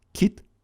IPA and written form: kʲit (кіт)